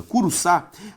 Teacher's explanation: Curuçá tem como sílaba tônica a última logo uma palavra palavra oxítona veja comigo então gente eu sei